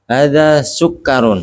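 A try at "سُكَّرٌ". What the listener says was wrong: Iya, kafnya di tasdid Pak ya.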